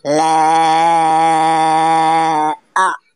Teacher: Cara membacanya yaitu dengan dipanjangkan selama 2 atau sampai 5 harokat. Contoh cara membacanya. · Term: mad jaiz munfasil